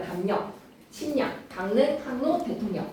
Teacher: 미음, 이응 뒤에 리을이 니은으로 바뀌는 비음화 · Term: 리을 비음화